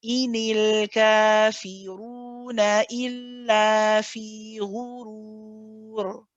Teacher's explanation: make sure you say il, hold the tawassut, then the la. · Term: shadda